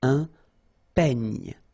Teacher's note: Final E, you don't insist on it. It's ny, the last sound.